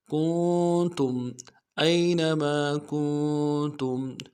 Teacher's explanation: کاف کو نون ساکن کے ساتھ ملانا ہے، نون ساکن میں غنہ کریں گے